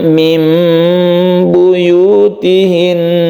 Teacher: dia itu adalah ikqrab bahwa dia itu membacanya menjadi mim jadi membacanya dipanjangkan sedikit dan dirubah menjadi mim · Iklab artinya membalik. Artinya nun ini melebur kepada ba, sehingga nun ini tidak dibaca lagi, melainkan membacanya itu dengan huruf mim. Jadi di sini ada mim yang kecil sebagai tanda bahwa dia itu adalah iklab, bahwa dia itu membacanya menjadi mim. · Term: iqlab